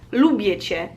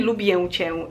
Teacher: Ę at the end of words is, I think always pronounced as E